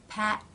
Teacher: second or release the airflow is stopped by the tongue position the tongue will come up and the front part will touch the roof of the mouth just behind the top teeth it will then pull down to release the air the teeth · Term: stop consonants